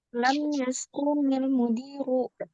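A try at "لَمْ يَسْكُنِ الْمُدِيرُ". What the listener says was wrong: Kuenya jangan dipanjangin teh. Lam yashkunil mudiru.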